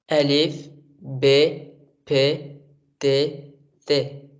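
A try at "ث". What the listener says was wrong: Bon, alors, on ne dit pas C comme la langue arabe. On dit tout simplement C comme S. En persan, il n'y a pas de différence entre Tha, Sad ou Sin. On prononce toutes ces lettres comme S.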